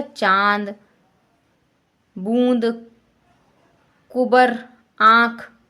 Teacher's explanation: अनुनासिक के उच्चारण में वायु नाक और मुंह दोनों से निकलती है।